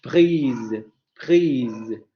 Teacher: con esa vocal alargada, justamente porque esa vocal aparece antes de una consonante alargante